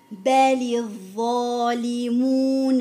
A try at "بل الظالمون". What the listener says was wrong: بل الظالمون عندك همس في الظا، انتبهي له. عيد.